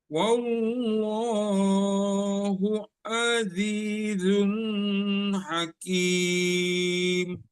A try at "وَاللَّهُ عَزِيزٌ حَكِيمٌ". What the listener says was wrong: Ingat, azizun hakim itu nggak di itu, azunnya itu kedomah tainnya nggak ditahan gitu Pak ya, nggak ditahan. Iya, itu apa izhar halqi.